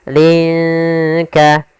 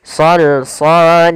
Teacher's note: Sama hukum tajwidnya yaitu ikhfa. Cara membacanya samarkan linnya ke huruf kaf.